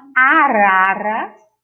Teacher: e a letra R entre as vogais tem um tom vibrante